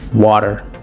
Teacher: The flap or tap T, which occurs between vowels when the second vowel is unstressed. It sounds like a quick D.